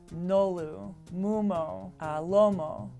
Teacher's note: These are all characterized by sonorant consonants. They're voiced consonants, and they all have rounded vowels.